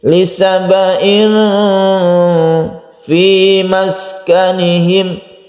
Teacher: Ikhfa itu kita dengungkan, kita panjangkan sedikit, kita tahan membacanya ketika membaca tanwin ini.